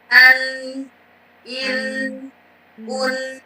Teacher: sedikit menggetarkan khayshum atau rongga hidung kita